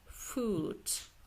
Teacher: Burada qoşa o olduğuna görə uzun u tələffüz olacaq.